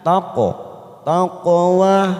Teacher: huruf qaf namanya qalqalah sugro kita pantulkan